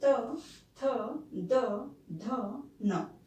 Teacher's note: ध्वनि का जो नाम है दंत से उच्चारण होने के कारण ध्वनि का नाम दंतई हो जाएगा